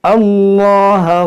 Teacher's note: अब यहाँ से ए अदा करेंगे तो इस अलिफ पर हम लगाएंगे ज़बर, क्योंकि खाली अलिफ के बाद यहाँ पर लाम है, तो इसको हम मोटा पढ़ेंगे।